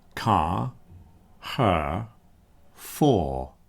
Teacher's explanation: You don't hear those rs. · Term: nonrotic English